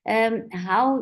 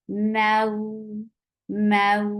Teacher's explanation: How you make lean long and soft by giving nice time on fatha and attaching with wow or ya very softly. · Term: harf lean